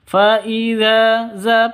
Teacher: Za panjang dua ketukan karena ada Alif diawali dengan fathah